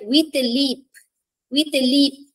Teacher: it's composed of two unaccented syllable followed by accented syllable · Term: Anapest